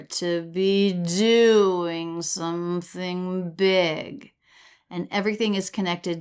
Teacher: we have two up down shapes of stress there to be doing something big and everything is connected so smoothly